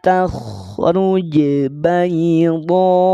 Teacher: Berhenti di bayda, maka dodnya panjang 6 harokat saat wakaf.